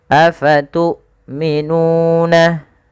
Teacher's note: hamzahnya harus ditahan suaranya dan ditahan nafasnya. Afatu'minuna, panjangkan nu sepanjang 2 harakat karena ia mad tabi'i.